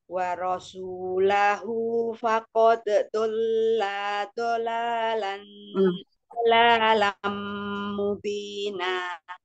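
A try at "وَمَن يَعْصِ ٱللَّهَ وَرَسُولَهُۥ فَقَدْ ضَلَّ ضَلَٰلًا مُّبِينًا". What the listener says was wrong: La tasjid ini jangan jadi panjang. Dola dola lam mubina.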